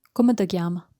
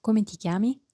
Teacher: the Neapolitan pronunciation reduces the unstressed syllables, greatly changing the sound of the sentence